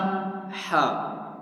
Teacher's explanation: حلق کے درمیان سے اس کو ادا کیا جائے گا